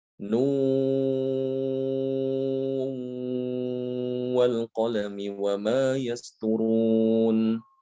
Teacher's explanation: Ada yang membaca dengan mengidghamkan huruf nun sukun itu ke dalam wawu.